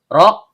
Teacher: ujung lidah bertemu dengan langit-langit bagian belakang. Karena rnya berharakat domah, maka hukum bacaannya tebal atau tabhim.